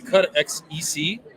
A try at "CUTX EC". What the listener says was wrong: Zek. The X is a Z sound.